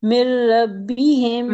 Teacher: साकिन हर्फ को ड्रॉप कर देंगे और अगले हर्फ के साथ ज्वाइन करके पढ़ेंगे। और अगले हर्फ के ऊपर शद भी लगाएंगे। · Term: इदगाम